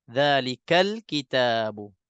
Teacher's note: Tapi bila kita nak sambung dengan yang sebelumnya, kita gugurkan. Tasqutu, kita tak baca hamzah wasal tu.